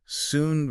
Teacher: Soon pushes the lips all the way forward for that long ooh like mood.